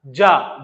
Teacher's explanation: जैसे ही जा बोलेंगे आप देखिए वाइब्रेशन एकदम से उठा